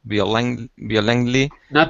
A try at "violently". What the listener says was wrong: Violently. Forget about the O. We really don't pronounce the O. Just violently.